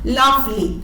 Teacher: അതിൽ ല ആണ് ഇവിടെ സ്ട്രെസ് ചെയ്തിട്ടുള്ളത്. അതിനുശേഷം അൺസ്ട്രെസ്ഡ് ആയിട്ടുള്ള ഇനി ആണ് വരുന്നത്. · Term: ട്രോക്കി